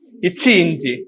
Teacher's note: நாவோட நடுப்பகுதியும் அது மேல்வாயோட நடுப்பகுதியும் தொடுவதால் தோன்றுகிறது.